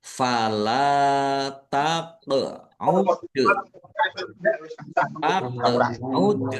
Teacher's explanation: Qaf sukun, bacaan kolkolah. Dal sukun juga kolkolah, dibaca memantul kolkolah, ditampakkan pantulannya.